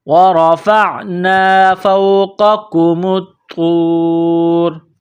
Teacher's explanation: را، را کے اوپر زبر تو موٹا کرنا ہے، فوقکم الطور، جب یہاں سٹاپ کریں گے تو را کو سائلنٹ کریں گے